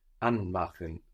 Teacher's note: An is stressed, which shows us that's a word in its own right.